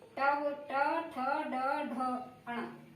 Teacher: ट, ठ, ड, ढ, ण। इनको बोलने में जीव की नोक पलट के ऊपर कठोर तालु से लगती है, मूर्धा से लगती है, इसलिए इसे मूर्धन्य स्वर कहते हैं। · यहाँ जीभ जब मूर्धा से टकराती है तो मूर्धन्य स्वर निकलता है।